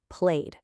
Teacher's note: It ends in a vowel sound, which is always voiced. So, it's played with a d.